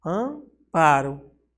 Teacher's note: se você falar palavra Amparo você vai perceber que ela é nasalizada ela passa pelo seu nariz